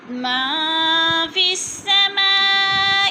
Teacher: فی السماء پہ مد متصل ہے، 4 الفی مد 4 الف کے برابر کھینچ کر پڑھنا ہے